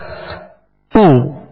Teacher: پیش ادا کرتے ہوئے ہونٹوں کو گول کیا